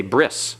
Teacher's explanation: the tau is no longer pronounced as a t it's an S so they say bris in modern Hebrew modern Hebrew is not